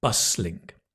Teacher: Okay, don't pronounce the T